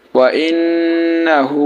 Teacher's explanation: এখানে দেখেন নুনে বা মিমে তাজদিদ হওয়ার কারণে আমরা গুন্নাহ করেছি · যখন আমরা মদের হরফের পরে ওয়াকফ করব সেই ক্ষেত্রে আমরা তখন তিন আলিফ টানবো